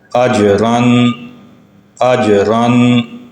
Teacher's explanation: دو زبریں آ جائیں تب بھی را کو پر کر کے موٹا کر کے ادا کرنا ہے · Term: را کی تفخیم